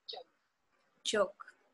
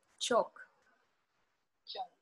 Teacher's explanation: the voiced sound that you hear at the beginning of the word joke and its voiceless partner that you hear at the beginning of the word choke